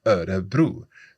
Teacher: So, we've got that kinda double rolled R in there.